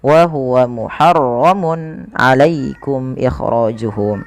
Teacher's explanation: pada lafal mun ketemu ain, ini harus dijelaskan suara tanwinnya karena adanya tanwin bertemu dengan huruf ain yang dimana ia termasuk daripada bacaan izhar halqi, maka harus dibaca dengan jelas.